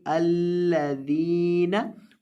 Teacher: दाल को लंबा करेंगे क्योंकि इसके बाद या है